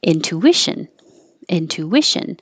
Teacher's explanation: there's an invisible W there because when you round your lips for the two and then you come back for the I, to I, and it makes a W.